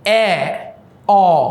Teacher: ঠোটটা কিন্তু আস্তে আস্তে করে প্রথমে সংবৃততে একদম কম করে খুলেছি তারপর অর্ধ সংবৃততে আরেকটু বেশি খুলেছি